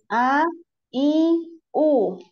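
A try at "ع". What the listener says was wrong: Masih ya? A masih ke hidung, masih ada ke hidung. Jadi jangan ada di hidung, ya? A, A, A.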